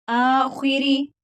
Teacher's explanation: अलिफ के ऊपर खड़ी जबर है तो एक अलिफ की मिकदार के बराबर लंबा करेंगे। खा हरूफ मुस्तालिया है, पूर पढ़ेंगे और वा के नीचे जेर है तो इसको बारीक पढ़ेंगे।